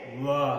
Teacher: वा को बोलते समय जो ऊपर का दांत होता है नीचे वाले ओठ पे आके लगता है, इसको बोलते जैसे व। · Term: दंत ओठ